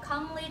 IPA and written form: kˈʌmli (comely)